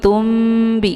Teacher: Tumbi, di sini ada nun sukun bertemu dengan huruf ba, ini dinamakan dengan iqlab ya. Makna iqlab itu membalikkan dari bunyi nun sukun menjadi kepada bunyi mim ya. Jadi yang kita baca di sini sudah jelas bukan nun ya, tapi mim.